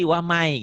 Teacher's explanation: huruf ya itu termasuk idgham yang dileburkan, dimasukkan, disertai dengan dengung dan ditahan